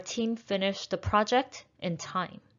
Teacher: Project is a noun, so we're stressing the first syllable.